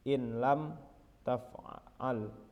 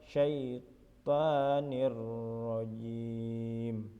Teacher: nun sukun atau tanwin dimasukkan menjadi satu dengan huruf sesudahnya atau ditasydidkannya tetapi tanpa mendengung. Contohnya nun sukun bertemu huruf lam pada lafal illam taf'al. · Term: idgham bila gunnah